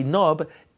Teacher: you don't hear the K, so you only pronounce the N and the B. So the N and the B, Nob, is 29.